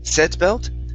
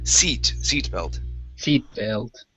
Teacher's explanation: this is going to be an e sound instead of set.